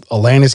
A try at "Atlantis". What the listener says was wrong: The way you pronounce it sounds like you're saying Atlantis, like Alanis Morissette. Atlantis. Like Atlas. You have to say Atlantis.